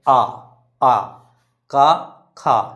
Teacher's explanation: क ख तो कंठ से आ रहा है तो मतलब उच्चारण स्थान क्या हो गया कंठ